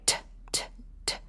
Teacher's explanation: T is a voiceless consonant, right? T, t, t. There's no vibration.